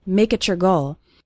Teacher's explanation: When we have a word ending in T, followed by the word you or your, it often sounds like a CH sound